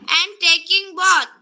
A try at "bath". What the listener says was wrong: ওকে, both হবে না, bath।